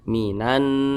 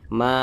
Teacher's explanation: baca baris ke atas maka huruf Ma dibaca panjang ma sama Mad Thobi'i panjangnya dua harakat atau kira-kira dua ketukan